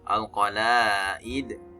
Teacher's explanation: mad asli ini dia ya panjangnya dua ketukan atau dua harakat